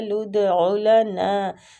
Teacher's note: دال کلکلا حروف ہے تو اس کو کلکلا خوب کریں گے۔